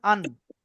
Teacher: দেখেন আপনার জীবের আগা উপরের তালুতে লাগছে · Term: নুনের মাখরাজ